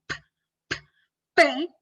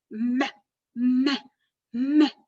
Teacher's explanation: el aire se le escapa por la nariz, además una voz débil, monótona, y termina siendo me, en vez de una P, me, y la B pasa lo mismo.